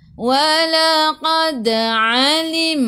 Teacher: ain daripada kerongkong bukan daripada hidung.